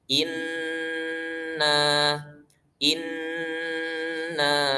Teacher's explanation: kita membaca nun di sini dengan ditahan. Inna inna karena ini adalah tingkatan yang paling sempurna ya, tingkatan guna yang paling sempurna.